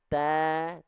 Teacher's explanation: Oke, nah huruf ta karena dia vokal A huruf tipis, maka dilafalkan buka mulut sambil senyum